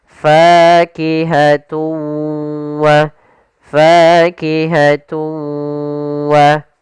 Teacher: suara tanwinnya kita masukkan langsung ke huruf waw dan kemudian kita tahan gunnahnya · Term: idgham bi gunnah